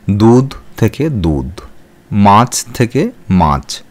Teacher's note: শব্দের আদিতে শ্বাসাঘাতের ফলে শব্দের শেষে অবস্থিত মহাপ্রাণ ধ্বনি স্বল্পপ্রাণ উচ্চারিত হয়।